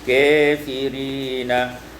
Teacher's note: Pada ayat 37 kafirina, imalatu fathatil kaf wal alif, dibaca imalah fathah kaf dan alif